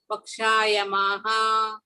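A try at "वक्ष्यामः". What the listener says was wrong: No, Ksha is half. Okay, so Vakshyamaha.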